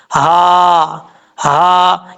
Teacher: پہلی ہا جو ہے بھاری ساؤنڈ کے ساتھ پڑھا جاتا ہے، اس ہا کا تعلق اس حلق سے ہے جس حلق کا تعلق سینے کی طرف ہے، اس لیے اس کو بھاری ساؤنڈ کے ساتھ پڑھا جاتا ہے